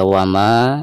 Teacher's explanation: Baik, perhatikan ketika kita membaca wama, di sini dipanjangkan 2 harokat karena dihukumi mad tabi'i ya, ada fathah lalu berhadapan dengan alif